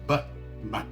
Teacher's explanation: m in there but it's okay it's still a relationship because B and M come from the same part of the mouth the combination of the lips coming together